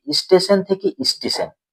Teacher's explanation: ব্যঞ্জন দন্তস টয় যুক্ত আছে আচ্ছা এই যুক্ত ব্যঞ্জন থাকার জন্য এই শব্দটাকে উচ্চারণে যাতে সুবিধা হয় তার জন্য শব্দের আগে একটি স্বরধ্বনির আগমন হয়েছে সেই স্বরধ্বনিটি কি এই স্বরধ্বনিটি হচ্ছে হর্ষী এই হর্ষ স্বরধ্বনিটির আগমন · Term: আদি স্বরাগম